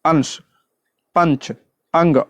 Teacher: अनुस्वार जो है एक व्यंजन ध्वनि है इसके उच्चारण में नाक से अधिक सांस निकलती है और मुख से कम